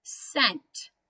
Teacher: i still make the n sound and the t sound but when i read it they just kind of blend together